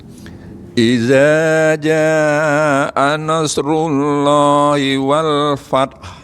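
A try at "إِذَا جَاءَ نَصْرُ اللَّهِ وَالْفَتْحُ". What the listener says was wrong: Ya, tinggal shotnya agak dipanjangin dikit. Nasru ya.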